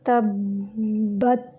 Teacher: यहाँ पे अब ये दो बा हैं। तब्बत, ता को साकिन करते हुए उसकी कमज़ोर वाली आवाज़ जारी रखेंगे। तब्बत, क्योंकि ता जो है ये सिफ़ात लाज़िमा में से हम्स का मजमुआ है तो फहसहु शख्सुन सकत में काफ और ता भी आता है और बाकी हुरूफ की अदायगी के वक़्त उनकी आवाज़ कमज़ोरी के साथ जारी रहती है।